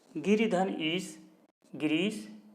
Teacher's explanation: ह्रस्व ई और दीर्घ ई मिलकर के दीर्घ ई।